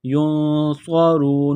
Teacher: کو موٹا کرنا ہے، سیٹی کی آواز پیدا کرنی ہے، ینصر، را واو پیش رو، را کو موٹا کرنا ہے